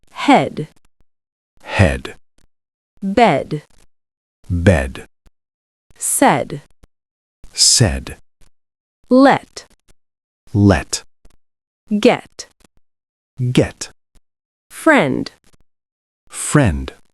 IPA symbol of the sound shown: e